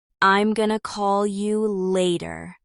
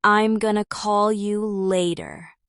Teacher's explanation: Finally, say it with emphasis on call.